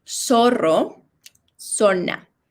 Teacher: in Spanish, it does not, you don't feel a vibration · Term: no vibration